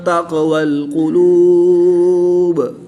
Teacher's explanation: وقف کی حالت میں با کی زیر کو ساکن کر دیں گے تو یہاں پر قلقلہ صغریٰ ہوگا